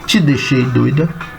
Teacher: Você tem toque da língua na porção palatina dos dentes superiores. Vamos falar T e D, a língua toca na palatina dos superiores. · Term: dentolinguais